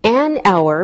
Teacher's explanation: We say an hour because we don't pronounce the H, so it sounds like a vowel sound.